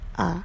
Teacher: vokal yang dihasilkan oleh gerakan lidah bagian tengah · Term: vokal tengah